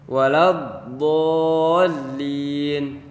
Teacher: Waladdo dari la-nya itu tidak tebal, tapi waktu pas masuk ke huruf do jadi ikut tebal. Langsung set masuk ke huruf do.